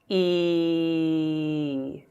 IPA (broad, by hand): i: